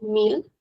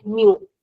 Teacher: in European Portuguese we'll call it meal and in Brazilian we'll call it mu since we do not pronounce the l